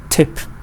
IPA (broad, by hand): ɪ